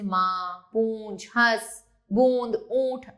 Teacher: हवा नाक और मुख से समान दबाव से बाहर निकलती है।